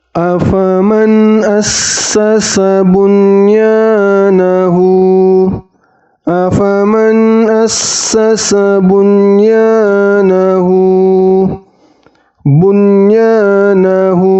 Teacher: juga harus jelas di sini ada ya fathah yang dibaca jelas Ingat nunnya tidak boleh ditahan dua atau tiga harakat Jadi cukup satu harakat saja